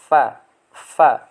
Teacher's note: bibir bagian bawah menempel pada gigi seri bagian atas